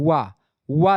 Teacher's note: वा जो होता है ये दंतोष्ठ है, यानी दांत और ओठ दोनों, आधा ओठ और मतलब दांत दोनों होता है इसमें।